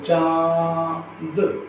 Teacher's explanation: अनुनासिक का जो उच्चारण स्थान है वो नाक और हमारा जो गला होता है वहाँ से, दोनों से होता है। जैसे चांद, मतलब नाक और कंठ दोनों से इसका उच्चारण स्थान होता है, इसका अनुनासिक का।